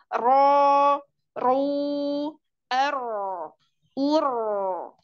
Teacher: dibaca tebal tebal yaitu pangkal lidahnya naik dan suara naik ke langit-langit